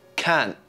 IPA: kɑːnʔ